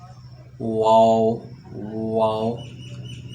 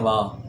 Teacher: دونوں ہونٹوں کو گول کر کے نہ تمام بند کرنے سے یہ ادا ہوگا، واو۔ دیکھیں، واو لوگ پڑھتے ہیں وا، ایسے نہیں ہے، اس کو پڑھیں واو، دونوں ہونٹوں کو گول کرنے سے، اور یہ جو ناتمام ہیں ان کو ملانے سے ادا ہوتا ہے، واو۔